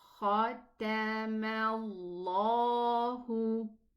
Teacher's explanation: So if we have a letter that comes before the name of Allah that has a fatha or a dhamma, then the lam in the name of Allah is going to be elevated